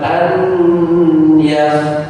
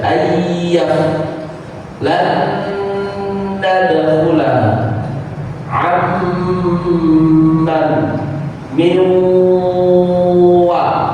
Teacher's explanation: Kalau nun sukun bertemu ya, hilang nunnya, langsung masuk ke huruf ya. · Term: idgham biguna